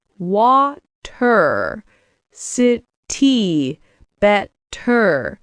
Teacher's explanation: in British English, they usually keep the T sound clean and strong.